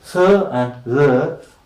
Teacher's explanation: They are known as dental fricatives because the friction is between the front of the tongue and the upper teeth